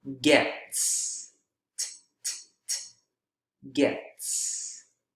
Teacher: so that's why this s is voiceless as well gets gets that s is also voiceless because t is voiceless no vibration